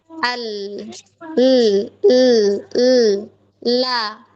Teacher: Keluar dari tepi ujung lidahnya. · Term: huruf lam